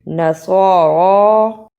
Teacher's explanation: سین کی آواز نہیں آنی چاہیے صاد کی جگہ پر